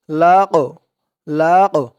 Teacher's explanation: কফটা হচ্ছে কলকলার হরফ, ধাক্কা দিয়ে পড়তে হবে। লাম কফ জবর লাক, লাক, একটু ধাক্কা খাবে।